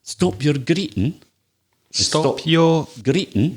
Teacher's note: Greeting, G, but again, we'd miss out the G.